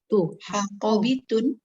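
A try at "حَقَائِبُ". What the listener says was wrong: Berarti di sini ada tambahan hamzah.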